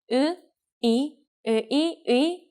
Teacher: the sound of 의 is easy to catch because it goes from 으 to 이.